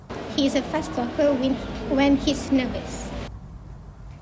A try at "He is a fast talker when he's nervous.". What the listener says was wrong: In this sentence, elision happened in the word fast. The expected pronunciation is fast with a t sound in the end, but the speaker said it as fast, dropping the final t sound. This often happens when the one word ends in t and is followed by another consonant sound, like the t in talker.